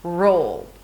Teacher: For the 'L' you bring the tongue up, but you're also engaging the muscles of the back of the tongue here, to create that dark deep sound of the dark L